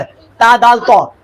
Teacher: इसकी प्रैक्टिस करो। जबान की नोक, ऊपर के दांतों की जड़, ता, दाल, तौ।